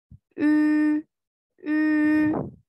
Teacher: Menjadi seperti huruf I, tetapi mulutnya berbentuk seperti mengucapkan huruf U menjadi U. Nah, seperti itu ya.